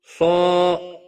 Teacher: صا الف مدہ ہے، ایک الف کے برابر کھینچ کر پڑھیں گے۔ صاد حروف مستعلیہ میں سے بھی ہے، پر پڑھا جائے گا۔